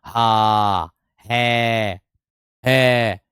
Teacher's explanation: तो अगर हम "हा" में स्वर का उच्चारण करें, अगर हम स्वर को लें, तो वे कहते हैं, " हो।" "हा," "हा।" इस तरह, मुख गुहा खुली रहती है और बंद गले को खोलने के बाद हवा झटके से बाहर निकल जाती है।